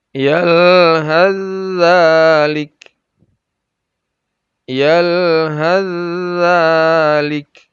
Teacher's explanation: Jadi haz tidak dibaca, has tidak dibaca, sa-nya tidak dibaca, langsung ke zalik. Karena dia adalah idgham, memasukkan huruf pertama kepada huruf yang kedua. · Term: idgham kamil